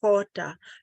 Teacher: When we have an aspirated H, it's hota. So it's coming again from your esophagus.